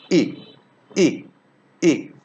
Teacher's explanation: hit mill it's flat it's not uh around it it's unrounded this vowel is pronounced in the front centralized part of vocal tract front centralized part not not fully central not fully formed just